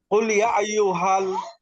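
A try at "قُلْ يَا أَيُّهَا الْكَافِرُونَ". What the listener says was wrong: ইয়াতে টান দেন তেলি। قل يا أيها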